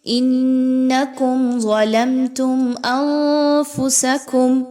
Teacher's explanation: نون ساکن کے بعد فا کا حرف آ گیا، اخفا کیجئے، نون کی آواز کو چھپائیے ناک میں ود غنہ